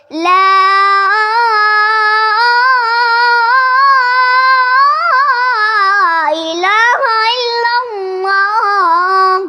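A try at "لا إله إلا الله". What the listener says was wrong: الا اللہ. اللہ کا لفظ صاف آنا چاہیے نا.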